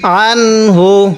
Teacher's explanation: এই আনের মধ্যে কি আমরা গুণনা করব না কারণ নুন সাকিনের পরে এই হা আছে